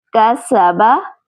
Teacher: سین میں سیٹی کی آواز آئے